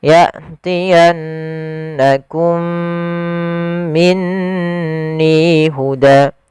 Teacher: mim yang pertama sukun mim yang kedua berharakat Maka dia kita baca dengan mim yang pertama dimasukkan kepada mim yang kedua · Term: idgham mimi